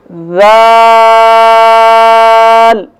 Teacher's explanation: زبان کی نوک جب اوپر کے اگلے دونوں دانتوں کی نوک والے آدھے حصے سے ٹکرائے گی تو ذال ادا ہوگا